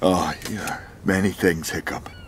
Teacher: l'accent écossais va rouler les R. Donc en plus de prononcer tous les R, ils vont les prononcer d'une certaine manière.